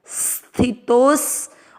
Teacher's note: तो के बाद में अवग्रह लंबा खींचना है और लंबा खींचते हुए तो के साथ आधा स बोलना है